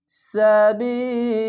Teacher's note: শেষ অক্ষর সাকিন দিবেন তিন আলিফ টেনে পড়বেন